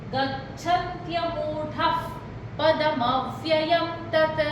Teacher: विसर्ग का उच्चारण आधा फ का होगा